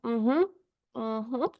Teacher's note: el aire sale netamente por la nariz, no sale por la boca